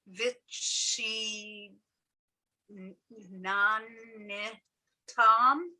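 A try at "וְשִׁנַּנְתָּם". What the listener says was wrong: so the second nun is just the end sound. shva, the shva is there and is silent. It's the end of a syllable. So the two nuns get pronounced together.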